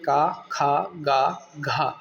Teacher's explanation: और देखिए, इन्हें कंठय व्यंजन कहा जाता है, क्योंकि जब आप बोलेंगे का, खा, गा, घा तो आप कंठ से बोलते हैं, इसलिए इसे बोला गया। कंठ से बोलने के कारण इन्हें कंठय व्यंजन नाम दिया गया